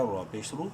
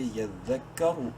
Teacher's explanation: رو کو منہ بھر کے پڑھیں گے پیش کی وجہ سے